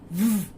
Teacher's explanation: Okay, so when you are saying the sound of V, that is V, you are closing your lips together and you are taking out the sound, okay, and it has a vibration